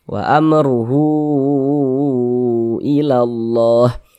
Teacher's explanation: Nah, maka dia menjadi madilah thawilah. Panjangnya itu 4 sampai dengan 5 harakat. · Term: mad silah thawilah